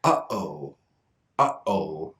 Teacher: Notice that the beginning sounds are very sudden. We don't say oh, yo. There's a stop sound at the beginning. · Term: glottal stop